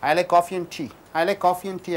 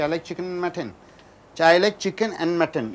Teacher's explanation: Only n. You are not supposed to say and just say n.